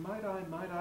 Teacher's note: the american voicing or tapping a t